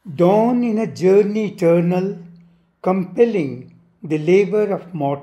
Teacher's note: It is in dactylic hexameter. That is long, short, short.